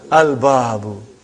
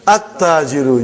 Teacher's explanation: You did not pronounce lam. Why you did not pronounce? Because it is sun letter.